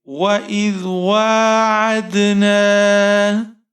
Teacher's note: آئین کے اوپر زبر ہے، دال ساکن ہے، دال پر آپ حروف قلقلہ کریں گے، جنبش آنی چاہیے آپ کی آواز میں